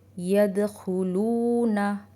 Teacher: यदखुलूना, यहाँ पे वाव मद्दा है, इसे भी हम 2 काउंट्स खींचते हुए पढ़ेंगे